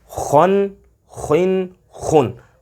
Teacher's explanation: خا کی آواز بھی نکالنی ہے اور اسے موٹا بھی کرنا ہے، لیکن یہاں پر غنہ نہیں کرنا